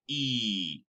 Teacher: The tongue can be high, the lips are close, and the tongue is high front.